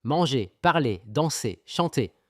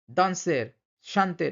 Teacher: এখানে কিন্তু শেষের আর গুলো কিন্তু উচ্চারণ করা হবে না